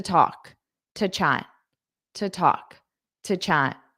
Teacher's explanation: the to will become an unstressed to talk, to chat, to talk, to chat.